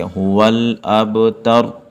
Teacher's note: آخر لفظ جو ہے نا اس کی جو پیش ہے ہم اس کو ختم کر کے ساکن کر دیں گے